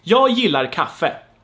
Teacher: pronounced with a y sound and not with a g sound